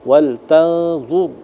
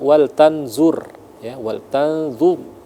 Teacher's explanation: jadi mulutnya dimuncungkan agar sempurna tebal rnya itu. Jangan wal tanzur ya wal tanzur ya dur ya ee agar sempurna ee tebal huruf ro itu. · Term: dibaca tebal